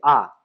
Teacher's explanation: जिसके उच्चारण में मुंह लगभग पूरा खुला रहता है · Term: विवृत्त स्वर